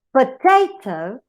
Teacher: the stress is not in the first syllable, it is in the second. So you call it stress in middle syllable.